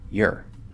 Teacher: so we take that r-colored o reduce it down to an er vowel sound which is the normal thing that happens for or when it's in an unstressed syllable